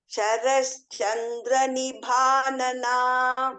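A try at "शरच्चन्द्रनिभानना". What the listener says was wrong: There is no Sharas Chandra. There is no Sha there. Sharat Chandra Nibhanana.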